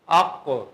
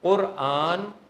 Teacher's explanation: اب کلکلا نہیں ہونا، قاف پر دمہ ہے، قاف مدموم ہے، اور قاف جو ہے نا وہ متحرک ہے، بولیں متحرک نہیں بولنا، کیا بولنا ہے؟